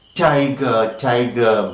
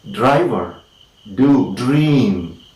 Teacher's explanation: the tip or the blade of the tongue is against the alveolar ridge or the teeth ridge